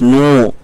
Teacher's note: واو ساکن سے پہلے نون کے اوپر پیش ہے، واو مدہ ہوگا، اس کو بھی تھوڑا سا کھینچ کر کے پڑھا جائے گا